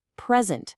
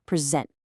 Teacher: For a ton of two-cllable words, when it's a noun, the stress is usually on the first syllable. present. But when it's a verb, bam, the stress jumps to the second syllable. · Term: word stress